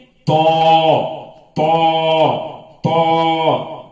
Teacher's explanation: زبان کو پھیلا کر اور دونوں جبڑوں کو لگا کر اور منہ گول کر کے ادا کرنا ہے